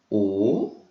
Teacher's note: A letra O a gente faz bem fechadinho